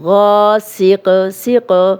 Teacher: غاسقن غاسقن، غائن موٹا ہے، الف مدہ بھی ہے، 2 حرکات لمبا کریں گے، سین کی زیر کو لمبا ہونے سے بچائیں گے، اور قن تنوین پڑھیں گے، اور اگر ہم اس حرف پہ سٹاپ کریں گے تو غاسق سیق، اب قاف پہ جزم لگے گی اور یہ کلکلا والا حرف بن جائے گا